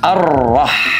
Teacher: keluarnya dari tengah-tengah tenggorokan ya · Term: huruf ha